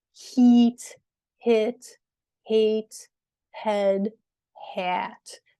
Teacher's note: lips become sort of more open as you go through these um and your tongue placement also changes um so these sounds